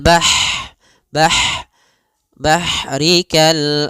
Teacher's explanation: dia punya sifat hames mengalirnya nafas fil bah bah bah bah bahrikal a'la kemudian di sini kal a alam ada alif lam lag alif lam qamariah dibac dengan jelas aam kemudian ada huruf ain yang dia disuk sukunkan.